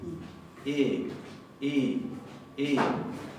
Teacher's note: ponemos la boca como para pronunciar una E, pero adentro decimos una I. I. Con la sonrisa.